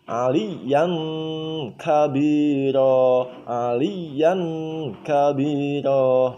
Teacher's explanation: kaf itu maju sedikit. Keluar sedikit dari makhraj huruf qaf. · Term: makhrajnya huruf kaf